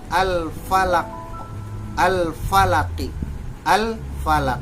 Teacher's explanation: alif lam tetap dibaca Al tidak dimasukkan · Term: Alif Lam Qomariah